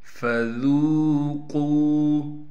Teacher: ذال کو نرم کر کے واو سے ملانا ہے۔ واو حروف مدہ میں سے ہے اس لیے ذال کو ایک الف کی مقدار کھینچیں گے۔ قاف کو موٹا کر کے پڑھیں گے اور قاف کے بعد واو مدہ یعنی حروف مدہ میں سے واو آ گیا اس لیے قاف کو بھی ایک الف کی مقدار کھینچیں گے۔